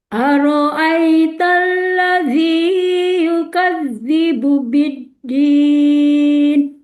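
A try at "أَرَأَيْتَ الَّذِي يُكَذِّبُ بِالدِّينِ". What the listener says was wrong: Ladinya dua harakat aja, Bu.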